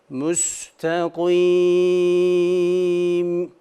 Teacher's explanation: mimden hafif bir esintiyi genzimize intikal ettiriyoruz